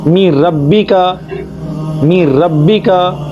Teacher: یہاں پر غنہ نہیں ہوگا بلکہ نون کی آواز را میں ضم ہو جائے گی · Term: ادغام